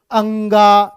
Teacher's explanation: इनको नासिक्य वर्ण भी बोला जाता है, क्योंकि ये सब नाक से बोले जाते हैं